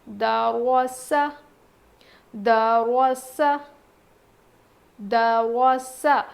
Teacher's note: را ہم موٹا پڑھیں گے، دال باریک پڑھیں گے، ٹھیک ہے۔ سین میں سین کی سی آواز آئے گی، یہاں دال کو باریک پڑھیں گے، را کو موٹا پڑھیں گے، سین کو سین ایسی سیٹی سی آواز آئے گی، دروس، دروس، دروس۔